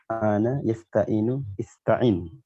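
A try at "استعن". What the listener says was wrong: Ista'in, benar, Masya Allah.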